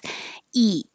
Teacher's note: your tongue is towards the front very high and very tense eat and you can feel the tension in in your chin